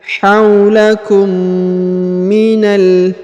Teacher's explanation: Huruf na langsung sambung ke huruf lam harokat sukun